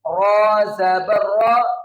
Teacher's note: جب بھی را کے اوپر زبر یا پیش آتی ہے تو را کو موٹا پڑھتے ہیں تو اس را کی آواز موٹی نکلتی ہے